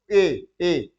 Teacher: कंठ का भी प्रयोग हो रहा है और ए जीभ भी हमारी हल्की सी टच कर दे रही है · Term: कंठ और ताल